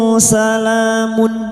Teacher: Nun sukun bertemu sin ikfa hakiki. Kita samarkan bunyi nun sukun dan mendengung selama tiga harakat. Salamun sala alif kecil di atas dua harakat kita panjangkan mad thai.